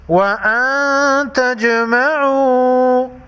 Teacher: نون ساکن پر اخفاء حقیقی ہوگا، جیم ساکن کو ہلا کر پڑھیں گے۔